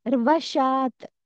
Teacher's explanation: ర కి వత్తు వచ్చినప్పుడు వ ని ఎక్కువసేపు అంటున్నాం